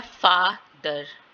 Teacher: एफ के ऊपर स्ट्रेस आ रहा है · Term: प्राइमरी स्ट्रेस